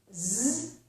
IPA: z